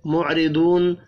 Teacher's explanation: معرضون، را زیر کی وجہ سے باریک پڑھیں گے. ضاد حروف مستعلیہ ہے، پر پڑھنا ہے. دو واو مدہ ہے، ایک الف کے برابر کھینچ کر بھی پڑھیں گے.